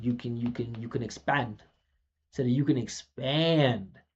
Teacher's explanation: You see, you barely even notice my P sound.